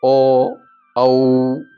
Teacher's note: બંનેનો ઉપયોગ થયો એટલે કંઠ તાલ્ય આપણે એને કહી શકીએ છીએ ઓ અને ઔ એની અંદર કંઠ અને ઓઠ બંનેનો ઉપયોગ થાય છે તમે બોલી શકો ઓ ઔ અંતે આપણે પાછું હોઠ ભેગા થાય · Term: કંઠ ઓષ્ટય